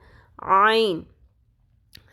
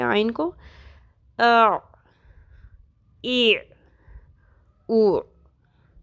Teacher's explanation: اگر ہم نے عین کو الف کی طرح پڑھ دیا تو ہم اس وقت بھی تبدیلی حرف کر دیں گے، ٹھیک ہے۔ عین کو ایگزیکٹلی حلق کے درمیان میں سے ادا ہونا ہے، اور یہ جو ساؤنڈ ہے حلق کے درمیان کی، یہ بالکل کلیئر سنائی دینی چاہیے